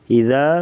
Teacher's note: ذال پہ جو مد ہے اس کو مد جائز کہتے ہیں، یعنی مد منفصل بھی کہا جاتا ہے۔ 2 سے 3 الف کے برابر اس مد کو لمبا کر کے پڑھا جاتا ہے